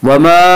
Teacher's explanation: वमा, अलिफ मद्दा, अलिफ में शाह मद्दा होता है, अलिफ से पहले ज़बर होता है। अलिफ मद्दा को एक अलिफ के बराबर खींच कर पढ़ेंगे।